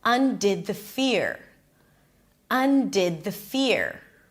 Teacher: Now, she's not closing it here yet. You can hear the tail going up.